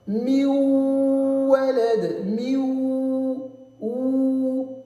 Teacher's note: c'est comme si le noun sakin, il a été transformé en waw sakin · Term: l'assimilation